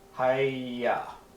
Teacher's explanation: it ends with the hey but there's no vowel around the hey so it's not really pronounced